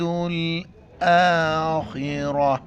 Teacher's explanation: حمزہ کے اوپر کڑا زبر ہے ایک الف کی مقدار کھینچیں گے. خا کو موٹا کریں گے اور را کو بھی موٹا کر کے پڑھیں گے.